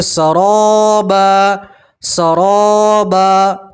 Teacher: دو زبر کی تنوین کے اوپر آپ وقف کریں گے تو ایک زبر اور الف سے پڑھیں گے